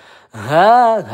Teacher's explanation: satu ayunan panjangnya ha ini pangkal tenggorokan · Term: izhar halqi